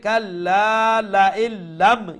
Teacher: তো নুন সাউন্ড আমরা শুনতে পাবো না লা ইল্লাম কিন্তু এইখানে গুন্না হবে না এটা হচ্ছে ইদগাম গুন্না ছাড়া